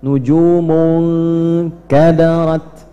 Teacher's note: Ya, jadi kalau kita misalnya mengucapkan di sini ada nujumun, nah nunnya langsung masuk ke huruf kaf, ke tempatnya makhrajnya kaf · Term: ikhfa